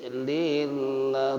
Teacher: Lamnya lam tarkik tipis